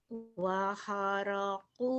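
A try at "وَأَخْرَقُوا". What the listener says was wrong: Waho, bukan ha. Ada titiknya. waho, wa kharaqu lahu banina.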